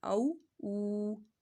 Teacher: یہاں پر واو ساکن سے پہلے پیش آ رہی ہے تو واو مدہ ہو رہا ہے، ایک الف کے برابر اس کو کھینچ کے پڑھنا ہے